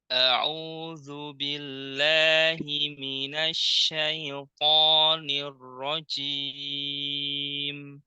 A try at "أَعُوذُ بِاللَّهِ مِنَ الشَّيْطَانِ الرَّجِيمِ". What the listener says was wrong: Nah, di jim jangan ada udara. Jim, tapi ji. Apa sifatnya? Syiddah. Nah, jadi kemudian jahar nggak keluar udara. Syiddah kuat. Ji. Dikuatkan. Ji. Ini rojim. Jim.